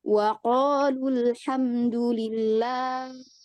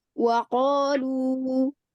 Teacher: Jadi lu itu hanya 1 harokat. Dia tidak dibaca panjang.